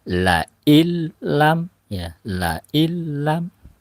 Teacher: nun mati bertemu dengan huruf lam, maka idgham bila guna ya, nunnya tidak terbaca. La illam ya, la illam langsung dari huruf lam.